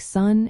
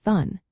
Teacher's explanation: A frontal lisp happens when the tongue pushes forward against or between the front teeth when making sounds like s and this causes those sounds to sound distorted almost like a th sound. Think about how sun might sound like thun.